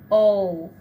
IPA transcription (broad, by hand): oʊ